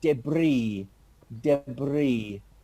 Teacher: It's a French loan word into the English language, and an S at the end of a French word is not pronounced.